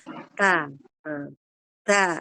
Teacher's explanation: Ketika kita membunyikan huruf ta, dia mengeluarkan nafas. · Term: hams